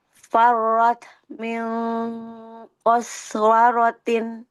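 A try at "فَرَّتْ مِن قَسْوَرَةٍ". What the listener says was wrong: Qaswaroh. farrot. Biasa aja Bu hamasnya. Farrot. Mio. Rot. Mio. Langsung. Tidak diputus suaranya.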